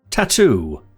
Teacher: that sound is an unvoiced alveolar plosive made by blocking the airflow with the tongue on the alveolar Ridge and then releasing it explosively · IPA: / t /